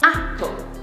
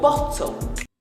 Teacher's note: Normally the stress would be on the first syllable like apple.